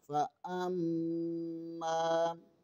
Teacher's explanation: حمزہ زبر کے آگے میم مشدد ہے، یہاں پر غنہ لازمی ہوگا۔ میم زبر کے آگے الف مدہ ہے، اسے ایک الف کے برابر کھینچ کر پڑھنا ہے۔